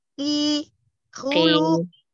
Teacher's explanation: Kofnya jangan terlalu ke belakang, ki, dan agak ke depan.